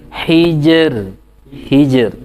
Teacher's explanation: R er tipis ya karena sebelumnya sukun sebelumnya kasrah ya